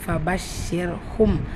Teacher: வந்திருக்கு அப்போ ராவை வல்லினப்படுத்த வேண்டிய அவசியம் இருக்காது மெல்லினமா ஓதினால் போதுமானது ஃபர்ஷிர்ஹும் மீம் சுக்குனை தொடர்ந்து லெட்டர் ப வந்திருக்கு என்ன இத்ஹாம் ஷஃபவி இணைச்சு குனா செஞ்சு ஓதணும்